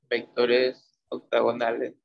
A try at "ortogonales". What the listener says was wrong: Ortogonales, no octo. Or. Con no, ortogonales.